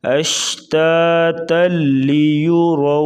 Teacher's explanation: اشتاتا، تا کو آگے لام کے ساتھ ملائیں گے،